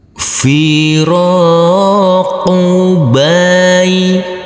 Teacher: Huruf ro dibaca panjang dengan panjang 2 harokat, karena huruf ro yang berfathah a ini bertemu dengan huruf alif yang tidak berharokat.